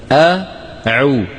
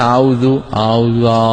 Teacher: العين الفصيحة لا بد فيها من رجوع لسان المزمار إلى الوراء قليلا، أعو. أما إذا قلنا أعوذ، أعوذ، هذا مو عين، صوت هلامي.